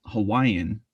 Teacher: when we say the english word hawaiian we don't really add that kind of glottal mark or phenomenon in it